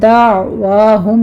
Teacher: دعواہم میں دعوا نہیں کہنا آپ نے، منہ تھوڑا سا کھولیے، آئین کو وسط حلق میں لے جا کے سٹاپ کرنا ہے